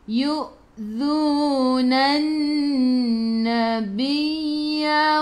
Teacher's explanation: Lam tak ada sukun, selepasnya ada sabdu. Terus tekan ke dalam nun, dengung 2 harakat, wajibul gunnah.